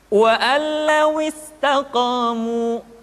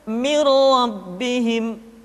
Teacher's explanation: Sementara kalau idgham bila gunnah, nun mati tanwin dimasukkan pada huruf lam dan ra yang dihadapannya tanpa harus ditahan. Contohnya, wa allaw istaqamu, tidak perlu wa allawis, langsung wa allawis.